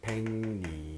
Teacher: 기역 뒤에 리을이 니은 됩니다. 백리. 그래서 니은의 영향을 받아서 백리. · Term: 비음화